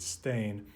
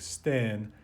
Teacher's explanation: this reflects a monophthongized pronunciation of that earlier word Stein, probably pronounced something like Sten